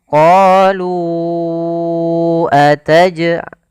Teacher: jalurnya Imam syatibi jalur Imam syatibi maka dia panjangnya empat harakat kita harus memanjangkan empat harakat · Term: Mad Jaiz munfasil